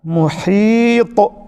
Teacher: اس کلمے میں حرف تا جو ہے اس پر قلقلہ کیا جا رہا ہے اور یہ ہے قلقلہ کبریٰ